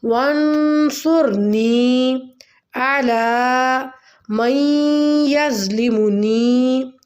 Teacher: یہاں پہ اخفا کریں گے نون پہ اور صاد کو موٹا پڑھیں گے